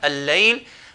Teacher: lam is going to merge with this following lam